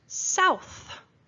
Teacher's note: and again I stuck my tongue out that is that th sound at the end